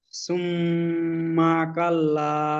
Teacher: সুম্মা কাল্লা, সুম্মা টান হবে না, সুম্মা কাল্লা। গুন্না করুন কিন্তু টানবেন না।